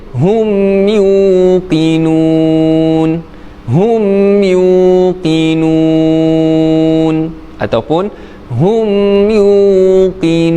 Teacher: Jadi hukumnya mad arid lisukun, dibaca panjang 2, 4 ataupun 6 harakat.